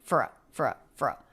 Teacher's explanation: It's almost like we don't have a vowel here. It's the F sound and then the schwa R sound. And R absorbs the schwa, so they're just one sound.